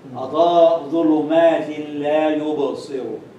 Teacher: tanween is followed by lam. So this is idgham without ghunna.